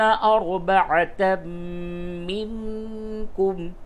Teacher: تنوین کے بعد میم ہے، ادغام مع الغنہ ہوگا · نون ساکن کے بعد کاف ہے، اس جگہ پہ اخفا ہوگا